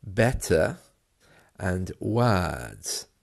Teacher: You'll notice that the letter R has almost vanished. And that's the way it is in and around the London area and also around certain other parts of the UK.